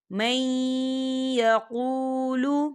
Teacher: وَمِنْهُمْ مَنْ يَقُولُ، دیکھیں مَن، یہاں نون ساکن ہے اور نون ساکن کے بعد یا آ رہا ہے، اور یا جو ہے حروف یرملون میں سے ہے، تو یہاں پر ادغام ہوگا تھوڑا سا غنّے کے ساتھ